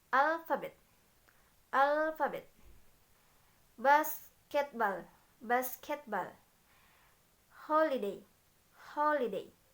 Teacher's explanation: Primary stress is on the first syllable and secondary stress is on the third syllables. All other syllables are unstressed. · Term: stress pattern 3